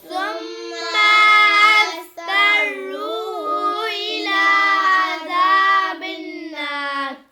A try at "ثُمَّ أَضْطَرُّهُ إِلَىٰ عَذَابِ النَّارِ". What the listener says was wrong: ثم اس کے میم کو بالکل لمبا نہیں کرنا، ثم پڑھنا ہے.